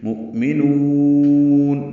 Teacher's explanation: حمزہ ساکن جھٹکے سے پڑھیں گے اور نون کو لمبا کر دیں گے۔ مؤمنون یہ وقفاً مد عارض للسکون ہے، آخر میں نون ساکن پہ اظہار ہوگا، یاد رہے یہ قلقلہ نہ کریں۔